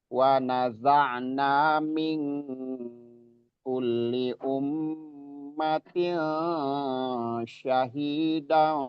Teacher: Jadi ikhfanya ini ming itu ikhfa nun sukun bertemu kaf